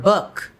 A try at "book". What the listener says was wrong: The lips shouldn't come out. The lips should be no lips.